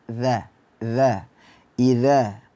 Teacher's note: makhrajnya berada di ujung lidah ee bertemu dengan gigi seri atas